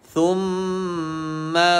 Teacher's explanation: Jumpa je mim bertanda sabdu kena dengung dua harakat